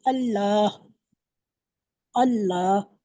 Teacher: लफ्ज़ अल्लाह को मोटा पढ़िए, मोटा नहीं पढ़ा आपने, बारीक पढ़ा आपसे।